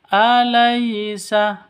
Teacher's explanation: sifat Lin lentur lemas tidak boleh disentak tidak boleh didengungkan tidak boleh dipanjangkan